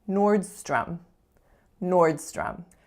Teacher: the T is being produced further back on my palate so it sounds more of like a CH sound as in chips